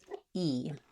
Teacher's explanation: This is called a high front vowel. When I say /i/, my tongue fills up most of the space in my mouth.